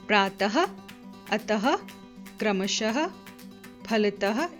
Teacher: इनका उच्चारण ह की तरह किया जाता है। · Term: विसर्ग